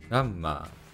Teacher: nowadays, it is pronounced more like a devoiced G